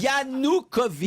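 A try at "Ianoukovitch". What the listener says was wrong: Non, vous avez dit Yakunovitch. Yanukovych, le président de l'Ukraine.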